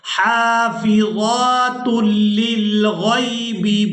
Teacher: تا کو لام مشدد کے ساتھ ملائیں گے۔